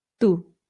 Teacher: So this is not to, it's to, which again, you can make the softer T by bringing your tongue right up behind your teeth instead of through your teeth